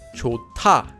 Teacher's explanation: There's a hyut at the bottom of the first syllable, and it's followed by a digut. So the digut changes into a tiut. This becomes pronounced as 좋다.